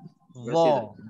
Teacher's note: Kena muncung sebab za tu dia huruf tebal. Mana-mana huruf tebal memang dia cenderung kepada muncung sebab itulah sifat tebalnya, sifat isti'la.